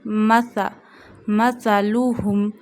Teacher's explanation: We read sa without whistle sound voice. We read it from the tip of the tongue touching the inner edges of top two front teeth. Read it very softly.